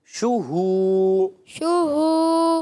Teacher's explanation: ہو الگ نہیں کرنا, شو ہو ایسے نہیں, آپ نے ملانا ہے